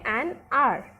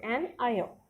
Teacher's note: We say an r, where this h is silent and this sound of the vowel is prominent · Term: silent h